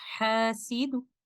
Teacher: And when stopping with a Raum, when the last letter of the word carries a dhamma or kasra, we will stop at the last word by lowering the sound and giving only 1/3 of the full vowel length